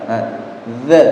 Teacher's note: Ujung lidah ditemukan dengan ujung gigi seri bagian atas. Tapi ujung lidahnya sedikit dimunculkan ke depan. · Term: dzal